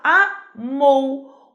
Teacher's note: O O é muito mais forte que o U, ele vai ser a vogal.